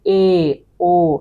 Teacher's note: অধঃসংবৃত হচ্ছে এ, ও। এ, ও যদি আমরা উচ্চারণ করি তাহলে আমাদের ঠোঁটগুলো অধঃসংবৃত হবে।